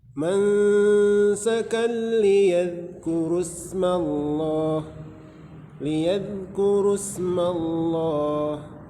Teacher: Lafzul jalalah didahului baris atas, maka dibaca tebal, kemudian dibaca panjang 2 harakat.